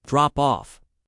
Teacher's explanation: the stress is on off.